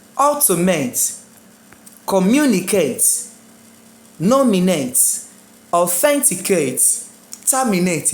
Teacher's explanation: So, as far as this word ends in ATE, I want to start putting my stress on third to last.